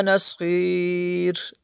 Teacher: آخر پہ را کو بری کریں گے